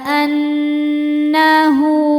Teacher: maka hal damirnya panjang dua harakat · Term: mad silah qasirah